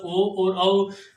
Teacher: अब रहे अपने पास ओ और औ, इनका उच्चारण स्थान कंठ और ओष्ठ है, इसलिए इनकी नाम ध्वनि कंठोष्ठ है